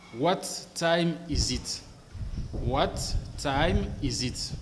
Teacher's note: Alors, si vous voulez sonner comme un anglophone, ne prononcez pas what time is it, ne prononcez pas le T du mot what, supprimez le T du mot what et faites la liaison avec le T du mot time. En ce moment-là, vous allez dire what time is it?